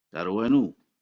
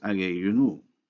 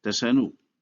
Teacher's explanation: The vowel of the possessive pronoun inu is dropped to keep the CV pattern, and so darwa inu is pronounced in fact darwanu.